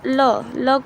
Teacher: ल को बोलेंगे तो दांत को स्पर्श होता है